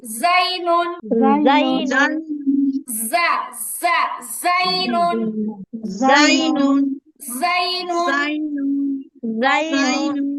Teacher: জিহ্বার আগা নিচে দুই দাঁতের পিছনে লাগে এবং যার উচ্চারণটা শক্ত হয়